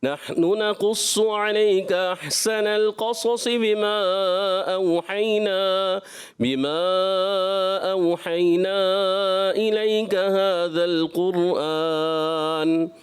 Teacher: جی ماشاءاللہ اچھی کوشش کی، مگر یہاں پہلی آیت کا جو پہلا کلمہ تھا نحنو، انہوں نے تھوڑا سا ایسے محسوس کھینچ دیا. نحنو ایسے کھینچنا نہیں ہے، فوراً جلدی میں ادا کرنا ہے